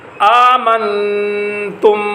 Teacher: آمنتم، آمن یہاں پر بھی نون مجزوم ہے، نون کے اوپر جزم آ رہی ہے لیکن اس نون مجزوم کے بعد حروف حلقی میں سے کوئی حرف نہیں ہے، اس وجہ سے یہاں پر غنہ ہو رہا ہے